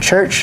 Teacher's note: affricate is found at the start and the end of the word church